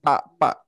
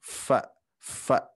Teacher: pertemuan bawah bibir dengan gigi seri atas